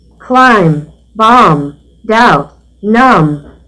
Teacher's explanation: Observe, não se pronuncia o B. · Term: Silent letters